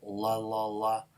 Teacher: you're kind of in la position, but in the back, the back of your tongue is also going into a velar position here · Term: velarized version